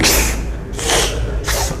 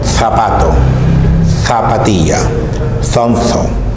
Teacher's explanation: la lengua está entre los dientes, no forzando, sino aproximándose. Recuerda que se une o aproxima. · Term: sonido interdental